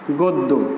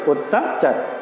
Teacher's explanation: ওকে, তাহলে আমরা সূত্র দেখলাম যে আদ্য অয়ের পরে আমরা জানি গয়ের সঙ্গে একটা অ আছে, তো অয়ের পরে জফলাযুক্ত একটি ব্যঞ্জন বর্ণ এসেছে, ফলে এই অয়ের উচ্চারণটা হয়ে গেছে ও এর মতো